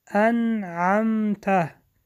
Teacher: اظهار حرف نون روشن خوانده می شود